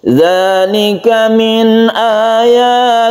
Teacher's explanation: Ayatillah ada lafaz Allah sebelumnya kasra disebut dengan lafdzul jalalah yang dibaca tarkik atau muraqqaq tipis ya.